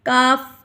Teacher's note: یہ حروف لہاتیہ میں سے ہے۔ لہات کا مطلب ہے زبان کی جڑ